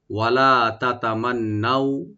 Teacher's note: এখানে তা open, double তা এখানে ওপেন করে পড়বেন, মিম ওপেন থাকবে, আর নুন মুসাদ্দাদ যেটা একটু গুণনা করে আমরা লিন করব, এখানে টান হবে না